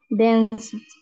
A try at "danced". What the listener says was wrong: Just please don't forget to exaggerate the letter T, okay? Danced. As you see, we pronounce, okay, a letter T, okay? Instead of a letter D or ED, we pronounce a letter T.